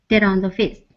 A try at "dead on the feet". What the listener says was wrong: See, you're connecting the D with the O.